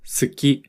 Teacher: Listen to the word suki, which means to like. Notice how we don't really pronounce the ooh sound when we say suki. It's common for the e and uh sound to become dropped in Japanese. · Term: dropped vowel sounds